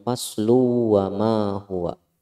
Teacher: di sini ada hukumnya idgham bi gunnah, ada tanwin bertemu dengan waw, hukumnya idgham bi gunnah. Jadi kalau disambung innahu laqaulun faslu wa ma huwa, faslu wa ma huwa kalau disambung.